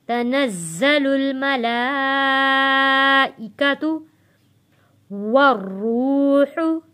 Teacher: जा के ऊपर तशदीद है, यहाँ पे हम सख्ती के साथ जा को अदा करेंगे।